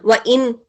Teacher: نون کی ساؤنڈ کو پڑھیں گے, کلیئر کر کے پڑھیں گے, اس کو ناک میں آواز نہیں لے کے جائیں گے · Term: اظہار